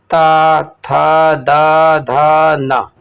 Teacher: ता था दा धा ना का उच्चारण स्थान क्या है, दंत है